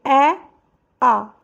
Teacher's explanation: ए आ, मुंह खुल गया, ओष्ठ तो लगा ही नहीं। ई, इसमें भी नहीं लगा।